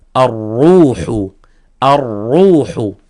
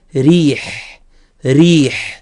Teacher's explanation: في كلمه الروح هنا تفخيم في كلمه ريح مرقق